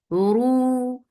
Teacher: Ru for dhamma circle your lips and make it two counts long